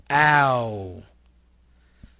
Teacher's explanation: Sound which starts in the position ah and moves to the position of oo.